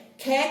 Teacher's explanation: ख कैसा है, अघोष महाप्राण है।